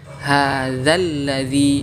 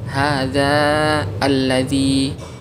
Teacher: ada alif yang sudah pasti sukun bertemu dengan lam sukun musyaddad. Maka alifnya dihapus sehingga dibaca hadzalladzi, bukan hadza alladzi, seperti itu.